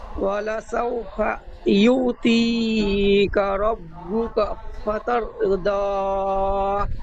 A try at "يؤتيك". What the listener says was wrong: এখানে ইউ ইয়া ওয়াও পেশ ইউর মতো উচ্চারণ হয়ে যাচ্ছে, ওয়াও সাকিনের মতো হচ্ছে, ওয়াও সাকিন নয়। আইন আছে, আইনটি গোলাচ্ছে। ইয়া আইন পেশ ইউ।